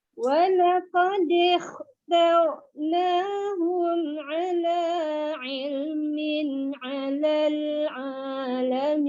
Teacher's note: Ni kha ni kena tebal. Walaqad lidah dia terangkat ya